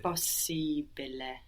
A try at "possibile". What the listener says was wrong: Very good. And it felt good to take it slowly, no?